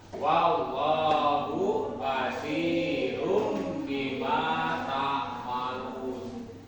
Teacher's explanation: Jadi makhraj sebelumnya ditukarkan kepada mim. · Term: iklab